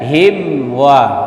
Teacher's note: Izhar kan sempurna tapi tidak ada dengung, jangan lama. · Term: mim mati